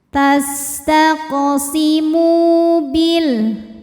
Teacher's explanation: Tastaqsimu mu mad thobi'i zohiri. Karena ada wau sukun didahului baris dommah. Maka huruf mim kita panjangkan dua harakat